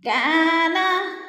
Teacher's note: کا پہ الف مدہ ہے، الف مدہ کو تھوڑا سا ہم نے کھینچ کر پڑھنا ہے